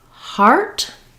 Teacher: I'm starting with my tongue not in the ER position it's more like the ah the Spanish ah and then I just tightly quickly move from that position into the ER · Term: the r diphthong